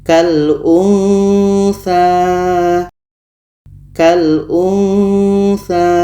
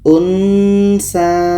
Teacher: Ketika sebut huruf nun, kita sudah merasakan huruf tha. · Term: ikhfa hakiki